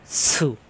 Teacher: সিন অক্ষর, সিনে আসছে পেশ, সিন পেশ সু। জিব্বা নিচে যাতে চাপ দিয়ে উচ্চারণ করতে হয় সফির হরফ সু